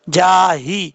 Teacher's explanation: यहाँ पे हा भारी साउंड के साथ पढ़ा जाएगा, इसको बारीक पढ़ने की जरूरत नहीं है। जाही, जिस हल्क से ये हा अदा होता है उस हल्क का ताल्लुक सीने की तरफ है, इसलिए इसको भारी साउंड से पढ़ेंगे, इसकी आवाज जो है सीने की तरफ से आएगी